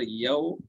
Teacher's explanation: वाव लीन को नरम आवाज के साथ जल्दी पढ़ते हैं।